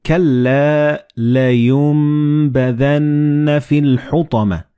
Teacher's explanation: Like in this example, you read كَلَّا لَيُنبَذَنَّ فِي الْحُطَمَةِ. So the noon and ba, they will be assimilated together and you will pronounce them as meme.